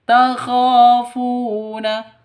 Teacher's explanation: kha panjang dua ketukan karena ada alif diawali dengan fathah, mad asli atau mad tabi'i juga. Funa, fu panjang juga dua ketukan karena ada waw mati diawali dengan dhammah, mad asli atau mad tabi'i, ya.